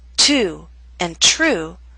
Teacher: in the words to and true we have the puff of air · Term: true T